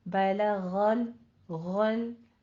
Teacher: अगला लाम भी बारीक, पिछला लाम भी बारीक रहेगा, और गैन को बीच में आपने पुर करना है।